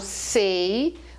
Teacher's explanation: quando eu falo sei o ditongo ele é fechado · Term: ditongo é fechado